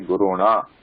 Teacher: Guruna also gets the cerebral na. So na changes to na.